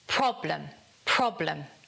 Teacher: The stress falls on the 1st syllable, so it's problem, problem, And again, the schwa comes in.